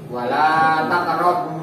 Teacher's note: Matobi itu panjang dua harokat ya.